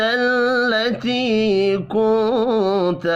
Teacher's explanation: نون ساکن کے بعد تا ہے، اخفاء حقیقی ہوگا۔